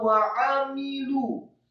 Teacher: Wawu fathah satu harokat, kemudian ain ditekankan keluar dari tenggorokan